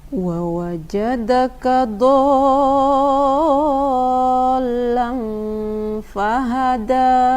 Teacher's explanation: Dotnya tidak dipanjangkan, semestinya dotnya dipanjangkan 6 harokat, atau bisa dimisalkan dengan 6 kali a-nya. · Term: mad lazim musaqqal kilmi